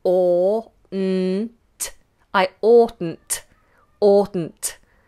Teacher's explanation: the pronunciation of oughtn't is or, this hard vowel, big space inside the mouth, or, n't. I oughtn't.